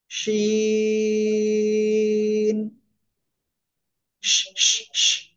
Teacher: হালকা শা শা শব্দ হয়ে তিন আলিফ টেনে উচ্চারণ করব · দেখেন, জিহ্বার মধ্যখান বা জিহ্বার মাঝখান উপরে তালুর সাথে লাগাবো, লাগিয়ে শা শা শব্দ করে আমরা তিন আলিফ টেনে উচ্চারণ করব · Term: শিন